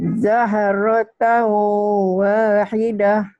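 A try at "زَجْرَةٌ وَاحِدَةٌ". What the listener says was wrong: Bukan jahrota, ini jim ya. Zaj, kokolah. Zajarata wahidah.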